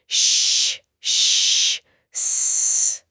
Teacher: श, श और स तीनों अघोष हैं। इन्हें बोलते समय गले में कंपन नहीं होता।